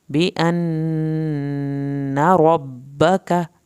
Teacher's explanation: नून की शत पे एक अलिफ के बराबर देर लगानी है, नून के ज़बर को आपने नहीं लंबा करना।